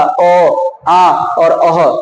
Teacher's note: कंठ से उच्चारण होगा अ, आ और अह, तो उसे हम कंठ स्वर कहेंगे